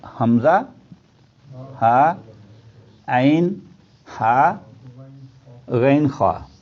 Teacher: حمزہ ہا کا سینے کی طرف حلق کا حصہ، غین خا کا منہ کی طرف حصہ، اور درمیان والے میں عین اور ہا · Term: حروف حلقی